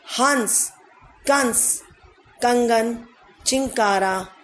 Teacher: इनका उच्चारण नाक से होता है, यानी कि जब हम इसको उच्चारण करते हैं तो हमारी ध्वनि नाक से आती है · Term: अनुस्वार